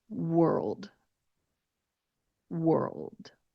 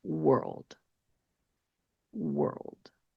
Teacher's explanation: If you're watching on YouTube, you can see how when I end on that word, how my jaw and my lips are in a very neutral position. My jaw does close when I'm getting close to saying that dark L sound, or it gets close to closing. Like I said, it's not completely closed.